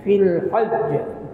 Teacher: Fil hajj, kalau kita waqaf di situ, dia jimnya itu sabdu, seolah-olah ada dua jim yang mati.